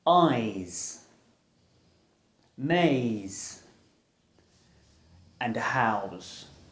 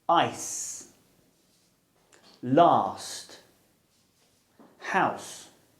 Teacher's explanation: With these sounds, air is pushed over our tongue and through our teeth. The z is voiced and s is aspirated.